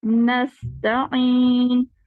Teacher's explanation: गला घूंटी हुई आवाज है, ज्यादा नहीं घूंटे